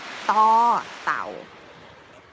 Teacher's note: the sound is between, in between, or combined between the D and the T.